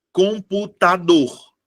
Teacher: A minha sílaba tônica é a última.